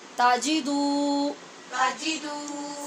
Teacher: واو مدہ ہے لہٰذا اس کی آواز کو لمبا کرنا ہے